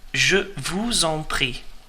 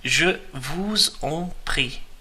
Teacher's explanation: we're merging the S and the E there from vous, the second word in, and on, the third word in, because the on starts with a vowel.